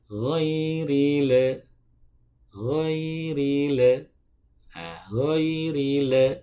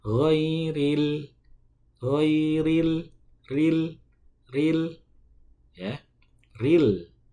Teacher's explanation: Dia at-tawassut, tidak terlalu mengalir suaranya, tidak juga terlalu tertahan suaranya